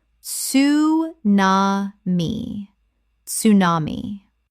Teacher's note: Correct pronunciation, tsu-na-mi. Three syllables with the TS sound at the start, fully pronounced.